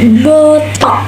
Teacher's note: pada fonem K ini dibacanya dihilangkan K-nya dan memberikan jeda